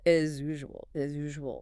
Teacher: The S in as is pronounced like a Z. When it hits usual, they blend.